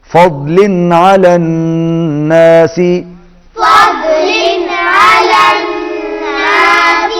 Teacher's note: اللہ ان اللہ لذو فضل علی الناس، لذو فضل علی الناس، فضل تنوین کے بعد عین آ رہا ہے، حروف حلقی میں سے اظہار ہوگا